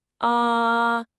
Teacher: The first tone is high and flat, kind of like you're holding a note.